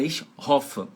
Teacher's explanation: Então é ich hoffe, é um O aberto.